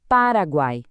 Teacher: O U é fraquinho. O A é o som forte, aberto. E o I também é fraquinho. Fraco, forte, fraco. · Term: tritongo